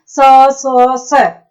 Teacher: उच्चारण करते हैं तो ऊष्मा के साथ बाहर निकलते हैं। एक रगड़ के साथ बाहर निकलते हैं। स ऐसे घर्षण होता है तो उसको बोलते हैं अपन ऊष्म व्यंजन।